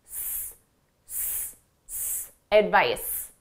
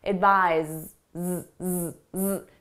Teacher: Z, our verb. Our verb is pronounced as a z. So the difference is that our vocal cords are engaged and it's a stressed sound. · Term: Z sound